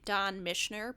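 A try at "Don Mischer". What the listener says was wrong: There's no N in there, but I liked the way you pronounce his name.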